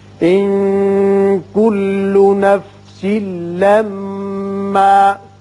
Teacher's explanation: اس نون پہ اخفا کریں گے، نفسل یہاں سین کے نیچے 2 زیر تنوین ہے، ادغام بغیر غنہ ہوگا، میم مشدد ہے، حرف غنہ ہے، یہاں غنہ کریں گے۔